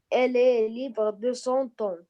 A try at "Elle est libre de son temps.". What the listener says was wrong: Oui, c'est très bien.